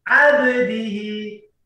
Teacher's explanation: ketika huruf ba dalam keadaan sukun, maka bacaannya harus dipantulkan. Contohnya abdihi, tidak boleh kita baca abdihi, tapi harus dipantulkan.